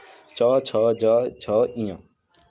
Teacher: च वर्ग के उच्चारण में वायु कुछ घर्षण के साथ निकलती है, इसीलिए इस वर्ग व्यंजन को संघर्षीय व्यंजन कहते हैं। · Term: स्पर्श संघर्षीय व्यंजन